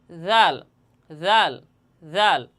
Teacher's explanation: এই জাল হরফটিও জিহ্বার আগা সামনের উপরের দুই দাঁতের আগার সঙ্গে লাগাইয়া জালও উচ্চারণ হবে